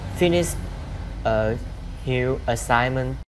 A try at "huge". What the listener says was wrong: When you say huge, make sure you do j at the end of the sound. J. Huge. Huge. The sound of a G-E. J. J. Huge. J. J. Huge.